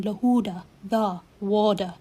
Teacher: e's at the end of a word are most delightfully pronounced as a schwa, the sound uh as in lewda, the, water